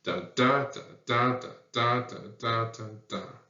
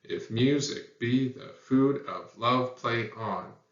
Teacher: 2-syllable foot. First one's unstressed. Second one's stressed. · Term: iambs